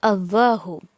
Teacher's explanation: یہاں پر لفظ جلالہ یعنی دا ورڈ اللہ، یہ تھوڑا سا ہیوی پڑھا جائے گا. اس کا لام جو ہے شروع میں آپ کو جو حمزہ نظر آ رہا ہے الف کی طرح، اس کو بالکل بھی آپ کو کھینچنا نہیں ہے، نہیں تو معنی بالکل الٹ ہو جائے گا.